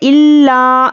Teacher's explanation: لام پر تشدید ہے اور یہ الف مدہ بھی ہے، تو لام پر سختی سے پڑھنا ہے، پہلے سختی کریں گے، الا اس طرح سے پڑھیں گے، ٹھیک ہے؟